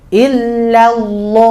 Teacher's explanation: Ilahnya tipis, Allahnya tebal. Sama seperti sallallahu.